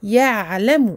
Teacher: On ne passe pas trop vite sur le ayn et on lui donne son temps d'écoulement partiel du son.